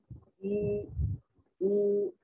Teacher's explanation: اب او کرتے ہوئے واو اور پیش کی ادائیگی کے وقت ہونٹ گول ہو جاتے ہیں مگر جبڑے دونوں آپس میں ملتے نہیں